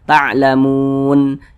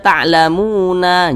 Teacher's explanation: kalau kita berwaqaf tepat di huruf nun, maka huruf nun ini kita sukunkan.